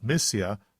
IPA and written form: ˈmɪ.si.ə (Mysia)